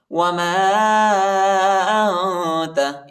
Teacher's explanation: میم کے بعد الف ہے، اس الف پر چوٹا مدی، اس کو تقریباً 2-3 سیکنڈ تک کھینچیں گے